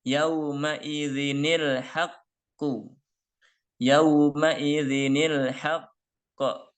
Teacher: maka bunyi tanwin pada zal yaitu zin hilang. Ya, ditambah dengan ni menjadi zini. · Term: nun kasroh